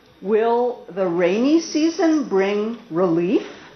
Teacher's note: I've never been here when it rained yes or no but I'm not certain that's why I'm using Rising intonation